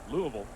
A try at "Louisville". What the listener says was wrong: you got to take one more syllable out of it it's two syllables